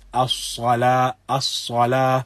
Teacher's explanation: the back of the tongue is raised slightly when one recites it. So one recites As-Salah, As-Salah, and as you can observe, there is something from a slight whistle sound when one recites this. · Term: Safir